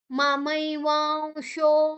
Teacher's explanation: ಶ ಅಥವಾ ಸ ಎರಡು ಬಂದ್ರೆ ಕೂಡ ವ ಆಗಿ ನಾವು ತಕೊಳ್ತೇವೆ ಅನುಸ್ವಾರದ ಉಚ್ಚಾರಣೆಯನ್ನ